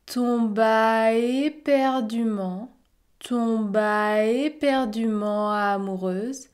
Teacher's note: il y a un enchaînement entre tomba et éperdument.